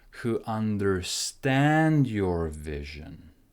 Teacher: the intonation goes down because we finish in the sentence.